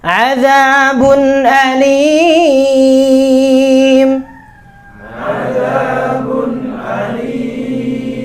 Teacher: Jangan diganti ain ya, azabun alim ya. Harus hamzah alim ya.